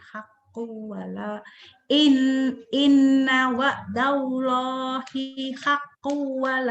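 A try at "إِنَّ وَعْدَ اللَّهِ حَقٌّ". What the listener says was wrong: Hinya pendek. Inna wa'dallahi haqqun. Hinya pendek. Inna wa'dallahi haqqun wa la yastakhifan wa la yastakhifannaka alladhina la yuqinun.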